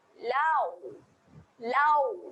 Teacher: Lam nganga, nganga dulu, untuk waw kita akan muncungkan mulut. Jadi dia akan menghasilkan bunyi lau. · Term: bacaan lin